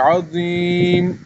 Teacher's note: یہ ضا ہے، تھوڑا منہ بھر کے پڑھنا ہے